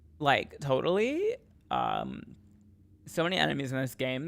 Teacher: I gotta get my vocal fry going